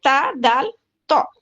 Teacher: इसका मखरज क्या है? जबान की नोक ऊपर के दांतों के मसूड़ों को लगने से या फिर गम्स को लगने से अदा होगा